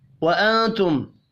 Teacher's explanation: نون ساکن کے بعد تا ہے، اخفاء حقیقی ہوگا